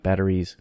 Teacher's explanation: the s in batteries of course gets voiced into a z sound it's plural after battery eval ending battery batteries so i need